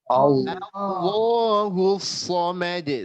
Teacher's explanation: Harusnya Allahu. Tebal lamnya, lafzul jalalah